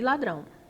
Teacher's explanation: E ladrão, nós temos que a sílaba mais forte é o drão, então é a última sílaba, logo ela é uma oxítona.